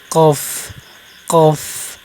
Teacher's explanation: জিহ্বার গোড়া উপরে তালুর সাথে লাগে উচ্চারণ করবেন। কফ কফ, আবার এত শক্ত করবেন না, 100-র মধ্যে 80% শক্ত করবেন।